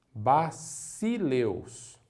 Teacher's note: jamais o Sigma terá pronúncia semelhante a um z como o nosso S na palavra casa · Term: pronúncia forte